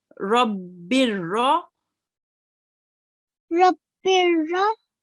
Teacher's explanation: So there are 2 kasras here. What we will be doing, we'll just be reading 1 kasra.